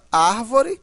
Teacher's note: são as palavras cuja sílaba tônica é a antepenúltima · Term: proparoxítonas